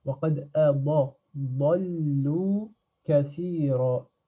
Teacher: Il n'y a pas d'air qui sort dans ض. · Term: ضاد